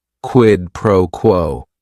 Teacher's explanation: if you're saying it together, the stress is kind of on that first word and that last word, quid pro quo.